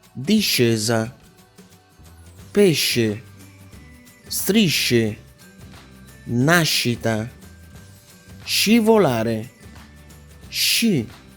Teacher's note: Usamos la SC con las vocales I y E. Este grupo tiene un sonido único como silbante. Se hace apoyando la lengua directamente al paladar, como cuando pronuncias la C.